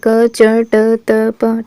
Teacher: कचट तप ये किस में आएंगे, पहले दो कॉलम में, तो ये हमारा क्या है, अघोष व्यंजन है।